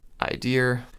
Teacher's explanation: So even though an R never existed there in the first place, the R is overgeneralized to pop up at the end of idea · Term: intrusive R